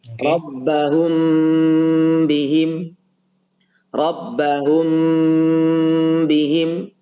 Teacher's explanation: cara mendengungkan bacaan adalah dengan mengeluarkan suara melalui hidung rongga hidung ini oke Ada suara yang keluar sampai terasa getaran di hidung kita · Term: Ikhfa Syafawi